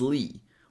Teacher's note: the last syllable is lee with a tense e sound